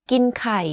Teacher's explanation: You can hear that my pitch went slightly lower at the end of this sentence. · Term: low tone